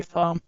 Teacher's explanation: So we say thumb without the B sound